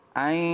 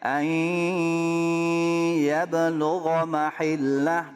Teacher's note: idgham bigunah bukan tasydid ya suaranya jangan dominan ke mulut tapi 50 ke hidung 50 ke mulut